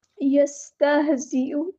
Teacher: زا کو سختی سے ادا کرنا ہے، ہاں کو ہلانا نہیں ہے، حمزہ کو واضح ادا کرنا ہے، یستہزئ، یستہزئ نہیں کرنا، ٹھیک ہے، زیو نہیں ادا کرنا۔